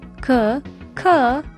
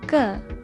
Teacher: This g sound is similar to the weak k sound, as in ski or kid. The k sound is basically the g sound with a strong aspiration.